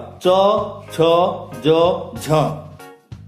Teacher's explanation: बंद करके खोलने पर वायु उच्चारण स्थानों को कुछ रगड़ती हुई स्पर्श करती है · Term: स्पर्श संघर्षी व्यंजन